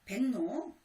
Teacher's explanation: 기역과 리을이 만났을 때 리을이 니은으로 바뀌게 되고요. 니은의 영향을 받아서 기역이 이응으로 바뀝니다. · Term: 상호동화